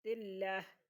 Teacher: تلہ ہا تلہ، وقف کریں گے تلہ، ہا کو ساکن کر دیں گے، وقف مطلق ہے